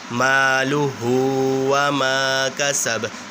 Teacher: یہ جو ہا یہ سینے سے نکلے گی، یہ بھاری والی ہا ہے، یہ نرمی والی ہا نہیں ہے، تو اس کو پڑھیں گے بھاری کر کے مالہ وما کسب.